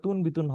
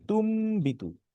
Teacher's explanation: তারপরে তুন বিতুন, কিন্তু এখানে তুন বিতুন হবে না, কারণ নুন সাকিনের পরে বা আসছে, তাই এটা মিম হয়ে যাবে